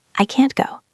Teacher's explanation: We stop the tea in our throat.